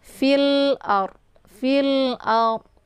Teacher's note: Atau biasa juga disebut dengan idhar qamariyah ya. Cara baca ditekan saja dan bunyi l-nya itu dibaca jelas.